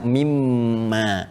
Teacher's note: Kalau kita sambungkan min dengan ma karena ada hukum idgham di sini ya. Idgham bighunah, maka kita baca mim ma.